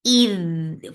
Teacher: Id for kasra give e sound attached with dal. Dal will get sifa of rakhawa, and rakhawa is flow of sound.